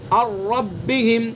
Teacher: نون کی صفت باقی نہیں ہے بلکہ نون بالکل سائلنٹ ہو گیا یہاں پر، تو یہ ہے ادغام تام۔